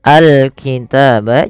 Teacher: Kemudian al-kitab, jelaskan alnya di sini kita namakan dengan alif lam qamariyah, yaitu alif lam yang kita tuliskan dan kita baca dengan jelas suara lamnya